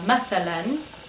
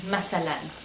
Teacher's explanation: the th can change to a s sound